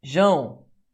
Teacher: O A é mais forte que o O. Você tem 2 ditongos decrescentes.